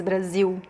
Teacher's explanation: Don't pronounce the L at the end of Brazil.